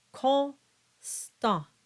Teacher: the combination of the ON and the combination of the AN both result in a nasalized sound. And the N is not voiced.